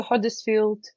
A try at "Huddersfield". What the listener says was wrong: I love the way you pronounce Huddersfield. It's a U, not an O.